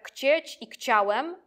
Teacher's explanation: zgodnie z małopolską zasadą, że [ch] przechodzi tam w [k].